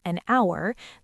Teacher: The H is silent, so it starts with a vowel sound.